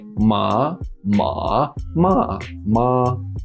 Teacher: you have the rising the dip tone the falling and then the flat tone